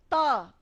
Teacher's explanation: त हम बोलते हैं तो हमारी जीभ हमारे दांतों तक आती है, और अब दांतों पे बिना लगे त बोलिए, दिक्कत हो रही है ना।